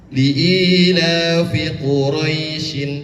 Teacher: Ketika diwasalkan atau disambungkan kepada ayat yang kedua, hukum bacaannya berbeda, pendek, pendek. Jadi, hukum bacaannya lin.